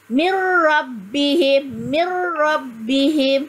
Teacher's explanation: menggabungkan huruf nun dengan huruf seterusnya tanpa dengung